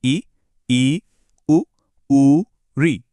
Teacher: पहला है संवृत, जिसमें मुंह लगभग बंद सा रहता है, जैसे ई, उ, री।